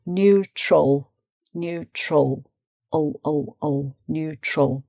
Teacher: often with words ending al, it's not like owl, it's ul